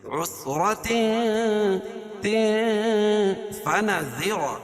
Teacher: تنوین کے بعد حروف اخفا کے 15 حرفوں میں سے فا ہے تو یہاں بھی ناک میں آواز کو چھپا کر پڑھیں گے